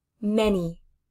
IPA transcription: mɛni mʌni